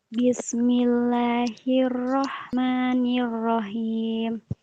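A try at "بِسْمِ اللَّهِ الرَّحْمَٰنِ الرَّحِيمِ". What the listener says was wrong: yang kedua rnya hilang ya jadi orang Inggris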